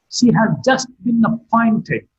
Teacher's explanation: Appointed has been marked with a falling tone.